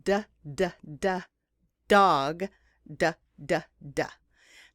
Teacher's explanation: your throat you can feel your vocal cords vibrating now but the sound is made in the same place in your mouth as the t the only exception is that you're using your vocal cords for the sound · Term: mega sound